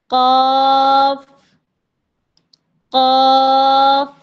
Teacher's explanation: जबान का पिछले वाला हिस्सा ऊपर नरम तालू के साथ मिल रहा है। यानी हम महसूस कर पा रहे हैं कि कुछ चिपक रहा है।